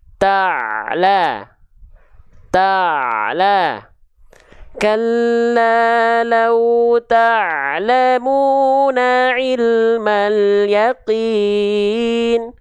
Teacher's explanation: Ya, katup epiglotis. Jadi ketika dilafalkan di tengah tenggorokannya, nanti katup epiglotisnya itu ditekan. Jadi dia agak sedikit mendekat ke dinding tenggorokan. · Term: ain